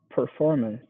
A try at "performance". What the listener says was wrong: Okay, I'm not hearing the CE at the end. Performance. Performance. Yeah, I'm not hearing you make the S sound at the end. Try to make that a little stronger. Performance.